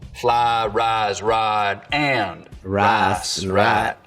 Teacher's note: appalachian smooth out the i diphthong the price vowel in some ways and we get a long ah sound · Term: full price smoothing